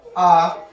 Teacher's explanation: आ, ये कंठ से बोले जाते थे